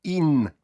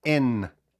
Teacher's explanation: увагу на вимову не кажеться не говоримо ін і не і у закритому складі ай вимовляється як українська и не як і